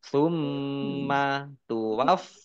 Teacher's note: mim tasdid dibaca gunah atau mendengung ditahan dua harakatnya dibaca dobel ada tasdidnya Fa fathah berdiri Mad thii Kullu lamnya